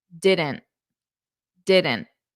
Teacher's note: notice how I'm not really pressing out that t